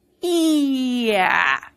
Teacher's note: You can actually feel your jaw drop as you go from a high vowel to a low vowel.